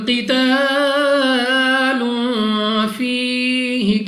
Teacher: لام کے اوپر 2 پیش اور 2 پیش کی تنوین کے بعد پھر فا حروف اخفا میں سے ہے، یہاں پر بھی غنہ کر کے پڑھیں گے۔ · قاف مستعلیہ میں سے ہے، موٹا پڑھنا ہے منہ اور آواز کو کھول کر